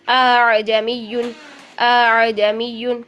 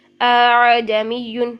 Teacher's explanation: دوسرا حمزہ جو ہے وہ نرمی کے ساتھ پڑھنا ہے، ہم نے پراپر اس کا حمزہ والا مخرج نہیں لینا بلکہ الف مدہ کے درمیان اور حمزہ کے درمیان میں پڑھنا ہے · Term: تسہیل